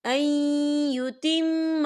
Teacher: یا دیکھیے این، یہاں نون ساکن ہے اور نون ساکن کے بعد یا آ رہا ہے، اور یا جو ہے حروف یرملون میں سے ہے تو یہاں پر ادغام ہوگا تو ہم اسے تھوڑا غنّے کے ساتھ پڑھیں گے